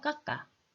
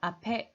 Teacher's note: 시옷을 디귿으로 바꾸는 게 아니라 그대로 이 시옷이 뒤에 있는 자리에 가서 발음을 한다는 거야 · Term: 연음